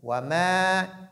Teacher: ici on doit prolonger mim